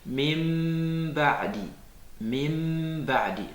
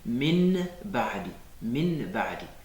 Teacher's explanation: Donc, si le noun sakina ou le tanwin est suivi d'un ba, au lieu de prononcer le noun qui est écrit, on prononce un mime, on le transforme en un mime avant de prononcer le ba. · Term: al-iqlab